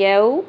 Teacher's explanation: या वाव ज़बर यौ वाव साकिन से पहले ज़बर हरफ लीन है, नरमी से पढ़ेंगे। यौ यौ नहीं पढ़ना, ये मजहूल गलती है।